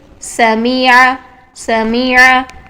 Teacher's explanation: मीम की हरकत को वन काउंट रखना है इससे ज्यादा आपने लंबा नहीं करना